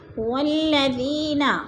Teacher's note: یا مدہ کو ہم نے ایک الف دو حرکات کے برابر لمبا کر کے پڑھنا ہے۔